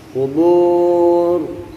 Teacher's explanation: Kubur, qafnya dijaga jangan sampai keluar desis angin. Kuburnya ini mad arid disukun minimal 2 harokat, kemudian huruf ro-nya kita tebalkan.